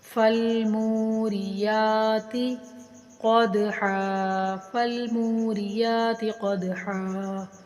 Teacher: دال حروف کلکلا میں سے ہے، اس کو ہلا کر پڑھیں گے اور ہا کو ایک الف کے برابر لمبا کر کے پڑھیں گے